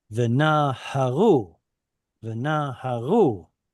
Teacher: because the penultima is stressed and it gets a full vowel, it's pausal